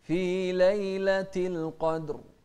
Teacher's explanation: وكذلك الدال هنا ساكنة فإذا هي مقلقلة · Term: القلقلة